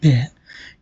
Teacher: you can feel the vibration of the vocal folds. So that vibration pressed the air resulted into low pressure. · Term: voiced